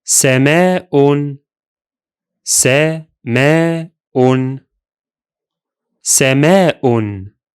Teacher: Both the vowel and the glottal stop are still there in addition of the noon sound of the tanween.